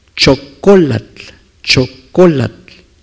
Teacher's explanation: se acentúa en la penúltima sílaba y así es la pronunciación